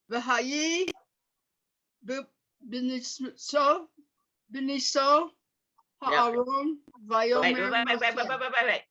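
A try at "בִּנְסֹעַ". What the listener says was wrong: Being soa. There's a vowel under the ayin, so it has a sound. So it's being soa.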